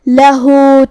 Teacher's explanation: کلمت لہو میں یہاں حرف الہا پہ الٹا پیش ہے، یہاں بھی حکم ہے مد صلہ صغرا، ہم اپنی آواز 2 مد کے برابر لمبی کرتے ہوئے یہ حکم کو ادا کریں گے